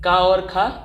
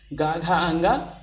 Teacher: शुरुआत के दो वर्ण अघोष और अंत के तीन वर्ण सघोष हैं